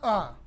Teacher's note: जो है मूल स्वर है, ह्रस्व स्वर है, कंठ्य है और घोष ध्वनि है